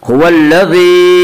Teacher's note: हुवल्लज़ी या मद्दा वो या जो साकिन हो और उससे पहले ज़ेर हो। या मद्दा को एक अलिफ के बराबर खींच कर पढ़ेंगे।